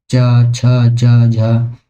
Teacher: रही है च की बात करें तो च छ च तो ये हमारा जीव जब हमारी तालू से लग रही है तो ये हमारा तालव्य वर्ण है